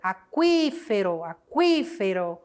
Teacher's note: A sílaba tônica é a antepenúltima.